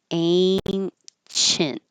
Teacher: Ancient, well, by itself, I would hold the T. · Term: holding the T